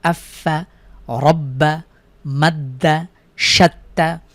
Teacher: আমরা দেখেছি তাসদিদের উদাহরণ হরফের উপরে তিন কাটা যুক্ত চিহ্ন থাকলে আমরা সেখানে দুইবার মিলিয়ে পড়ি পূর্বের হরকতের সাথে একবার মিলিয়ে আরেকবার তার নিজের হরকতের সাথে